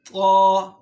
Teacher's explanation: زبان کی نوک جب ثنایا علیہ کی جڑ کے ساتھ ٹچ ہوتا ہے تو یہاں سے طا ادا ہوتا ہے